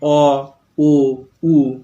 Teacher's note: যে স্বরধ্বনি উচ্চারণের সময় জিহ্বা গলার দিকে অর্থাৎ ভিতরের দিকে পিছনের দিকে সরে যায়, গুটিয়ে যায়, তাকে বলে পশ্চাৎ স্বরধ্বনি। খেয়াল করো, অ আগে যখন আমরা ই বলছিলাম জিভটা যে জায়গায় ছিল, অ যখন বললাম জিভটা অনেকটা পিছন দিকে সরে গেছে।